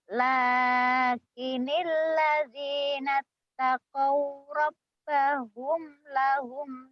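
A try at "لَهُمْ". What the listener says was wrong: Kenapa suara jadi menggetar gitu? Lahum. Jangan getar. Lakinil ladzina taqaw rabbahum lahum jannatun tajri min tahtihal anhar.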